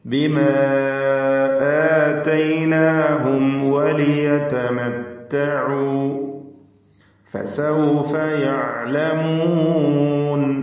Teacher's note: ഐൻ തൊണ്ടയുടെ മധ്യത്തിൽ നിന്ന് വ്യക്തമാക്കി ഉച്ചരിക്കുക. ലിയതമത്തഉ യഅലമൂൻ തുടങ്ങിയ പദങ്ങളിലൊക്കെ ഐൻ ആവർത്തിച്ചു വരുന്നു.